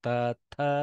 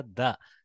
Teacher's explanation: Softening of the takara to a dakara.